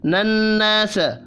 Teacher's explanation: مدہ کو ایک الف کے برابر کھینچ کر پڑھنا ہے، نناس نون مشدد پر بھی غنہ ہوگا